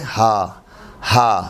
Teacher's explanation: یہ ہا سینے کی انتہا سے، حلق کی طرف سے سینے کی انتہا سے ہا، یہ دو چشمی ہے، الحمدللہ ہی، الحمدللہ ہی۔